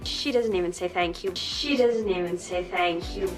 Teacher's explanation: the words doesn't and even link together while the t sound gets dropped. So the n links to the e sound. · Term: connected speech